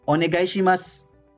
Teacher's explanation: So, if you will say onegai shimasu, okay, you will write it with U, but you will speak it without U, without U. · Vowels I and U are omitted, reduced, or whispered. Okay? So, in this example, dun sa onegai shimasu, so U is omitted.